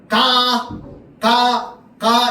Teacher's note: 혀 뒷부분이요. 요 여린 입천장을 막을 거야. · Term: 파열음